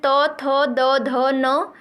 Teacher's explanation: त वर्ग के अंतर्गत जो भी वर्ण आते हैं त थ द ध न, इसके साथ ही ल और छोटा वाला स, इसका उच्चारण स्थान भी दंत ही होता है